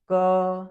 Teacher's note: यानी कि जब आप क का उच्चारण करते हैं तो क के उच्चारण करने में सबसे ज्यादा जिसका उपयोग किया गया है वो क्या है, कंठ है ना